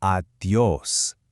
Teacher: Pointing out the stressed O here, giving it a nice, bright finish.